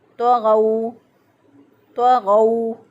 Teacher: वाओ पर होंठों को मुकम्मल गोल करते हुए अदा करेंगे। गैन ज़बर वाओ गौ, वाओलीन है, वाओ साकिन से पहले वाले हरफ पर ज़बर, लिहाजा वाओलीन हुआ। · हम इसको पढ़ेंगे अल्लज़ीना, अल्लज़ीना। तग़ौ, तो मोटा है, गैन में मोटा हरफ है, दोनों को पुर करके पढ़ेंगे। ज़ुबान के पिछले हिस्से को ऊपर के तालु की तरफ बुलंद करते हुए इनको अदा करेंगे। तग़ौ, तग़ौ, वाओ पर होंठों को मुकम्मल गोल करते हुए अदा करेंगे।